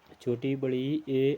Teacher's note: हिंदी स्वरों में जो है छोटी इ बड़ी इ ए अग्र स्वर है